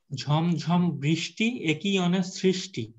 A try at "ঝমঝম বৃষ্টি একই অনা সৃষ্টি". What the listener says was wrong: good আরেকবার বলেন